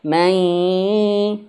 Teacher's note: Nun mati jumpa dengan huruf ya, maka dimasukkan ke huruf ya dan juga sama gunnah, sengau. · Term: idgham bi gunnah